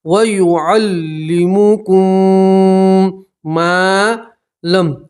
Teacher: میم ساکن کا میم کے اندر ادغام ہوگا اور گنہ کریں گے